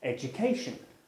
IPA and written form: ˌedjʊˈkeɪʆən (education)